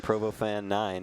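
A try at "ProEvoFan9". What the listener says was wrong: it's Pro Evo. Yeah, it's Pro Evo fan, not Provo fan. With an E.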